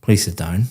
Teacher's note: very flat intonation going down